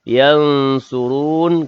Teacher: kalimah yang surun, nun mati bertemu dengan sad, juga ikhfa hakiki. Dengung juga 2 harakat.